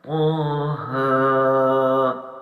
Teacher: ان میں مد نہیں ہے تو لہٰذا ان کو لمبا صرف 1 الف کی مقدار طا اور ہا کو کرنا ہے